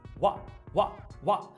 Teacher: a gente tem uma parada glotal aqui na palavra what.